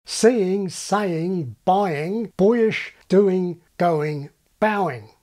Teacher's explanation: all seven Australian vowels including GOOSE are generally diphthongs when a vowel follows